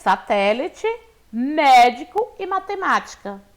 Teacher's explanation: são palavras aí que a sílaba tônica é a antepenúltima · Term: proparoxítonas